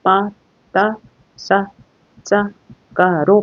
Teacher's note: 예사소리로 시작하면이 뒤에 있는 어미를 된소리로 발음합니다 당연히 뒤에 있는 거죠 뒤에 있는 예사 소리를 된소리로 발음 합니다